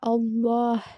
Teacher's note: ஸோ அதுக்கு முன்னாடி வந்து உங்களுக்கு வந்து வேற ஒரு லெட்டர் வச்சு அதில் வந்து ஃபத்ஹாவோ இல்லை வந்து தொம்மாவோ வந்துச்சு அப்படின்னா, நீங்கள் அந்த அல்லாஹ் அந்த ஃபுல் வேர்டை வந்து எப்படி ஓதணும் அப்படின்னா, ஹெவியாக அல்லாஹ் அப்படின்னு ஓதணும், வல்லினமாக ஓதணும். அல்லா அல்லா அப்படின்னு ஓதக்கூடாது, அல்லாஹ்.